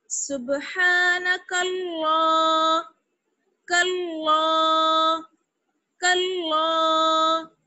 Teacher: الف اور لام جو ہے یہ پڑھے نہیں جائیں گے, یہ ہم نے آپ کو چیپٹر پڑھایا تھا, کچھ حروف لکھے جاتے ہیں لیکن پڑھے نہیں جاتے, تو ہم کاف کو ڈائریکٹ لام سے ملائیں گے, اور اللہ ہے تو اس لیے لام جو ہے وہ موٹا پڑا جائے گا کاف پر زبر کی وجہ سے